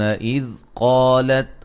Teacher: قاف کو موٹا، الف مدہ ہے